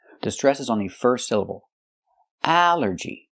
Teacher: It's three syllables. Allergy. The stress is on the first syllable.